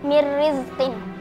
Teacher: Hukumnya idgham bila gunnah karena ada nun sukun bertemu dengan huruf ro, dibaca melebur tanpa mendengung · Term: idgham bila ghunah